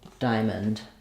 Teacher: So I'll write it with no vowel. The IPA is going to be first syllable stress, the I diphthong, and then you might see a schwa written there between the and the n, but it's very, very short and reduced. · And then the O is basically a schwa here. So almost no vowel. I'm going to go right from my sound to my n, diamond, mend.